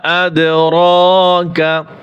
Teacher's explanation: এই হামজা দাল জবর আদ, এখানে কলকলা হবে।